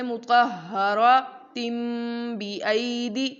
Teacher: اب یہاں دیکھیے اگر ہم یہاں وقف کر دیں نا مطہراتن، یہاں پر ہم روک دیں، ابھی آگے جملے کو نہ لے کر جائیں تو ہم پڑھیں گے مطہراتن وقفا مطہرا. لیکن اگر ہم اسے آگے ملا کر پڑھنا چاہیں جیسے مطہراتم بِأَیْدِی، تو ہم نے اس تن کو تم میں بدل دینا ہے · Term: اقلاب